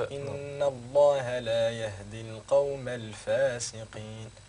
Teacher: فتطلق مع الفاء نفس هواء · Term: مهموسة